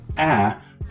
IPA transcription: æ